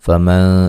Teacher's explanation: فمن نون ساکن کا باریک اخفا ہے